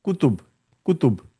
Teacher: So the u in the end the u sound is removed and the ta sound is removed.